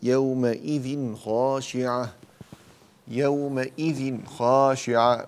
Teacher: يومئذ خاشعة من غير زيادة الغنة في التنوين